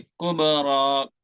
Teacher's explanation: کب میں قلقلہ ہے